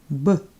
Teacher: The letter B sounds like B in bed. Try to avoid a strong burst of air after the sound.